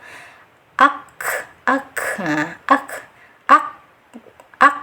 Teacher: Nah, setelah itu karena kaf dengan ta ini masuk ke huruf hamzah, yaitu adanya aliran udara yang mengalir. Jadi setelah ditahan suaranya baru diiringi dengan hamzah, diiringi dengan angin atau nafas yang mengalir, tapi tetap ada sifat syiddahnya terlebih dahulu.